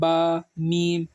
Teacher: ये दोनों होठ मिलकर बा अदा होता है।